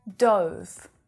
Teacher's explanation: that's a diphthong vowel sound the o sound it's the same sound that you hear in go and no